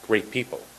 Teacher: we almost don't say the T in great.